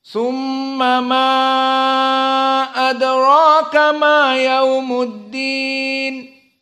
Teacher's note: maka hanya mim di sini gunnah. Summa harokatan faqat.